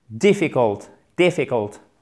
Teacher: Et on a l'accent tonique, donc bien évidemment, sur cette première syllabe.